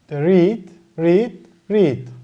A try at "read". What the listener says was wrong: Halbuki okunuşu şimdi Türkçe okunuş gibi yazalım. Read değil mi? Böyle i'yi uzatalım. Bu red okunuyor. Bu da red okunuyor. Bu aynı yazdığını sen şimdi burada niye read okuyorsun? Burada niye red okuyorsun?